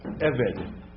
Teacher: the accent on servant, on Eved, is on the first syllable.